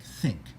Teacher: typically we make it a voiceless dental fricative